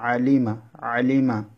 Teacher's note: আইন কন্ঠ মাঝখান থেকে উচ্চারণ করবেন